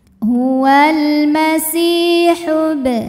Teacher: Ya Sukun didahului baris kasrah maka Sin panjang dua harakat huwal masihub kemudian bnya dihukumi dengan Qalqalah Sugra karena ba sukunnya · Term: mad thi'i